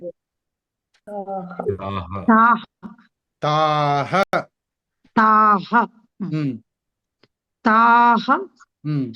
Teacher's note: విసర్గ ఉన్న ప్రతి దగ్గర హ వినిపించాలి